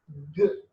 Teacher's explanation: Okay, place is velar, soft palate, and manner is ga. When you say ga, complete close and sudden release. Okay, plosive.